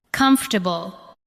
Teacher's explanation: Do not give every syllable the same weight. Let the first part carry the stress.